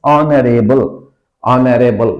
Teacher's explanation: it's honorable because initial H is silent